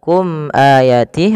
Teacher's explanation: Kemudian pada lafal kum ayatih ada mim mati bertemu hamzah, maka ini kita namakan dengan bacaan idhar syafawi. Idhar syafawi yaitu suara mimnya dijelaskan. Izhar artinya jelas, syafawi berkenaan dengan bibir kita.